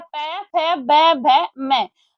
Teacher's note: ये होठों से बोले जाते हैं